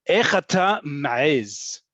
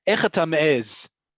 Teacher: And I like pronouncing the ayin strong there